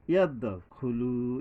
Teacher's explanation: ইয়াদ দালের উপরে একটা কলকলা মানে প্রতিধ্বনিত হওয়া।